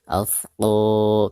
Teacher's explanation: Maka cara membaca alif lamnya itu harus dizohirkan karena ada tanda sukun di atasnya seperti ini ya. Alfqo, ketika membaca qo dipanjangkan 2 harokat karena ada harakat fathah qaf lalu berhadapan dengan alif sukun, dihukumi mad tabi'i.